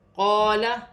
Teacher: الف مدہ بن رہا ہے، ایک الف کی مقدار کھینچ کر پڑھا جائے گا